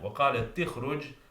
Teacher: Now the hamza in أخرج is enabling hamza, it should not be pronounced. So that means that the ta needs to connect with the kha. So we have a cluster of two consonants. So the cluster reduction rule kicks in, and the ta is given a kasra.